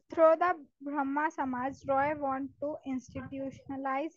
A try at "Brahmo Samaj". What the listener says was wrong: Through the Brahmo Samaj, Brahma nahi hota, Brahmo Samaj, Roy wanted to institutionalize his ideas and missions.